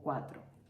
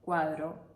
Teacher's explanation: Oclusivos, orales, dentales. La diferencia es que el sonido cuya grafía es T es sordo y el sonido cuya grafía es D es sonoro. Es decir, en el sonido cuya grafía es T, en el T, las cuerdas vocales no vibran.